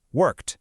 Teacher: if the verb ends with a sound that has no voice, like the K in work, the ending sounds like a T, worked. If the verb ends in a voiced sound, like the L in call, it's a D sound, called.